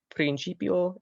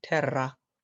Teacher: R is rolled, and it will be different depending on whether there is one R or two. So the two examples are principio and terra. So the R sound just lasts a little bit longer.